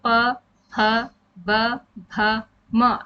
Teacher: आपके दोनों होठ आपस में मिलते हैं यानी होठों से ही इनका उच्चारण होता है इनमें न तो हमारे दांतों की कोई मदद ली जाती है · अगर आप प, फ, ब, भ, म इनको बोलेंगे तो आप बोल के देखिए प, फ, ब, भ, म। आपके दोनों होंठ आपस में मिलते हैं, यानी होठों से ही इनका उच्चारण होता है। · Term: ओष व्यंजन, ओष्ठ व्यंजन